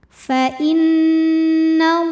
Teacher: lam pada lafaz Allah atau lam jalalah dibunyikan secara tafkhim karena huruf sebelumnya berbaris fathah. Maka cara bacanya adalah ditebalkan, pangkal lidah diangkat. · Fa innallaha, alif lamnya dinamakan dengan alif lam syamsiyah karena alif lam menghadapi huruf syamsiyah yaitu lam. Maka cara bacanya alif lam tidak kita baca atau biasa disebut dengan idgham syamsi.